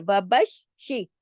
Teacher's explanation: अब ये देखिए, बशी, शीन शीन के ऊपर तशदीद है, शीन 2 दफा पढ़ा जाएगा, सख्ती से जोड़ के, जमाओं के साथ, सख्ती से जोड़ के, वबश शी।